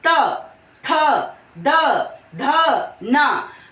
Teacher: हम जब बोल रहे हैं तो हमारी जीभ जो है वो दांत के पीछे वाले हिस्से को स्पर्श कर रही है, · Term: दंत वर्ण